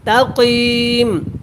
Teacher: کاف کو آپ نے موٹا پڑھنا ہے، تا کو باریک پڑھنا ہے